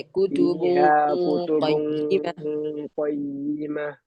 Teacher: അഥവാ ഇവിടെ നമ്മൾ ശ്രദ്ധിക്കേണ്ട കാര്യം, കുത്തുബുവിന്റെ കാഫാണ്, ഖയ്യിമയ്ക്ക് ഖാഫാണ്. അപ്പൊ നമ്മൾ ഈ മറച്ചു മണിക്കുന്ന സമയത്ത് ഖാഫിലേക്ക്, അണ്ണാക്കിലേക്ക്, നാവിന്റെ ബാക്ക് സൈഡ് അണ്ണാക്കി തട്ടണം.